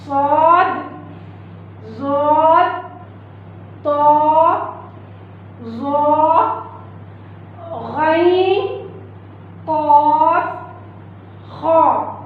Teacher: इनका पढ़ना ये मोटे हुरूफ हैं, ये हुरूफ मोटे हैं, ये हुरूफ मोटे पढ़े जाते हैं। मोटे यानी इनकी आवाज़ ऊपर को उठती है, आवाज़ मोटी निकलती है।